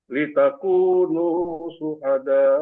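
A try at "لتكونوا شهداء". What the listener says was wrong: Ah ya, litakunu syuhada hamzahnya tidak terdengar tadi. Jadi harus terdengar. Litakunu syuhada da karena ada hamzah.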